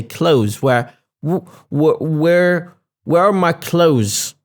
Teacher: I tend not to say the th especially in words like months and clothes